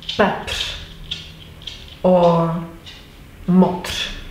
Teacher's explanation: The second R will be lighter, nearly a whisper